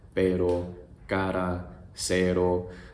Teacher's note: what your tongue is actually doing is it's flipping over the hard, bumpy part behind your teeth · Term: tap R